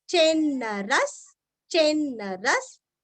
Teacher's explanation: र के आगे विसर्ग का उच्चारण आधा स